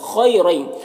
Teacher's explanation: خیرین، خا حروف مستعلیہ میں سے پر پڑھیں گے، یا لین سے نرم آواز کے ساتھ جلد پڑھیں گے